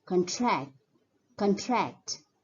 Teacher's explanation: The stress is more on the first syllable, whereas when the word is used as a verb, the stress is more on the second syllable.